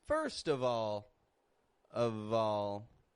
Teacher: we're linking with the v